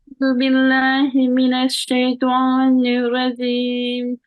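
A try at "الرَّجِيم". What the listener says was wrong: Rajim, not say not G. G. Rajim. Say it again. And try to get rid of the nasal sound in the letters.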